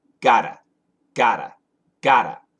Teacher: So yes, the flap T sounds like a D.